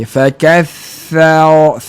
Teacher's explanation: Tha tu ada sikit terkesan dengan tebal ra tu. Sebab bila kita nak nipiskan tha, nak betulkan fathah tha tu, jangan cepat kita ubah kedudukan mulut kita untuk sebut ra tebal.